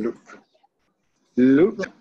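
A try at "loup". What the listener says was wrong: Do you pronounce letter P?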